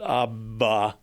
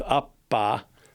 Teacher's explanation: abba, the voicing never stops. But with appa, the voicing briefly stops, which means P is voiceless, B is voiced.